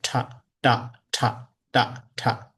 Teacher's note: So dental sound, like the touching our teeth with our tongue, tip of tongues.